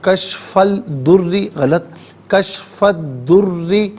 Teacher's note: یہاں را مشدد ہے، اسے جماؤ کے ساتھ پڑھیں گے، را کے نیچے زیر ہے، باریک کر کے پڑھا جائے گا۔